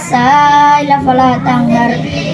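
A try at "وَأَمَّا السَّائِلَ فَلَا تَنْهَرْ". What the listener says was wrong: Tadi ayat yang ke-10 kalau enggak salah itu wa ammas, bukan fa ammas. Wa ammas. Wa ammas.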